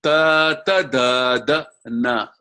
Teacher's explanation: the tongue tip goes to the teeth